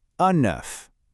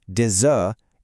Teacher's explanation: But in the plural, des œufs, it completely transforms. The final consonants just disappear, and you get this smooth Z sound connecting them.